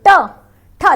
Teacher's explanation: Next आ जाएगा आपका, जब आपकी जीभ टर्न करेगी, मूर्धन्य में टर्न करेगी पीछे की तरफ, उसे मूर्धन्य कहेंगे। लगेगी तालु पर लेकिन जीभ टर्न करेगी पीछे की तरफ, है ना, मुड़ेगी।